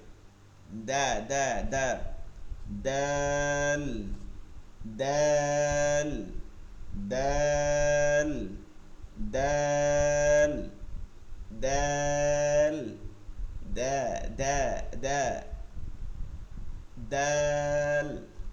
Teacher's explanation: জিহ্বার আগা এই যে দুই দাঁতের গোড়াতে গিয়ে লাগবে।